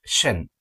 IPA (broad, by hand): ʃən